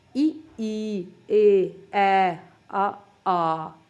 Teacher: ਤੇ ਅਗੋਲ, ਇਹਨਾਂ ਨੂੰ ਜਦੋਂ ਆਪਾਂ ਉਚਾਰਦੇ ਹਾਂ ਤਾਂ ਆਪਣੇ ਬੁੱਲ ਗੋਲ ਨਹੀਂ ਹੁੰਦੇ ਬਲਕਿ ਚਪਟੇ ਹੋ ਜਾਂਦੇ। ਇਹਨਾਂ ਨੂੰ ਉਚਾਰਨ ਸਮੇਂ ਤਾਂ ਗੋਲ ਹੋ ਜਾਂਦੇ ਨੇ, ਬਟ ਇਹਨਾਂ ਨੂੰ ਉਚਾਰਨ ਸਮੇਂ ਆਪਣਾ ਮੂੰਹ ਐਵੇਂ ਹੋ ਜਾਂਦਾ, ਚਪਟਾ ਹੋ ਜਾਂਦਾ, ਗੋਲ ਨਹੀਂ ਹੁੰਦਾ।